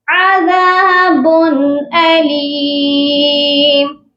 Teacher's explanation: یہاں پر با کی تنوین پر صرف اظہار حلقے ہوگا کیونکہ آگے حروف حلقے آ گیا ہے